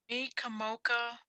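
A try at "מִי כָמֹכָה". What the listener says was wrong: so it's mi chamocha. There's no dot in there, so it's mi chamocha.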